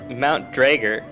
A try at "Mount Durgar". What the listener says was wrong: Drager? But you're placing the R at the start.